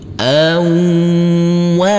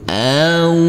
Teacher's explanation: Huruf nun kita baca panjang dengan panjang 2 harokat karena huruf nun yang berdhamah u ini bertemu dengan waw yang bersukun.